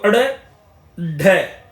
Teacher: जिनके उच्चारण में जीभ ऊपर उठकर झटके के साथ नीचे को आए ड़ और ढ यहां पर देखेंगे जब आपकी जीभ एकदम से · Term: उत्क्षिप्त